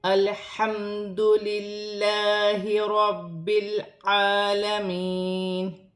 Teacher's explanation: میم بھی ساکن ہے، میم کو ہا کے ساتھ ہا کی حرکت کے ساتھ ملا کر پڑھا جائے گا۔ ہا حروف حلقی میں سے ہے، حلق سے ادا کیا جائے گا